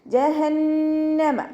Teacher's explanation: നൂനിന് ശബ്ദ വന്നു, നല്ലോണം മണിച്ചു കൊടുക്കുക